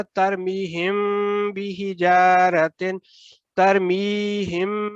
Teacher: میم کے بعد اگلا حرف با ہے تو آپ نے پھر میم ساکن کا اخفاء کرنا ہے اور 2 سیکنڈ غنہ کے ساتھ ادا کرنا ہے۔ میم کی آواز ہلکے نون کی آواز کے ساتھ تبدیل ہو رہی ہے کر کے، تو آپ نے اس کو پھر ادا کرنا ترمیہم بحجارۃ، ترمیہم، یہ جو ہم میں نے کیا ہے اس کی وجہ ہے کہ میم ساکن کے بعد با آ گیا۔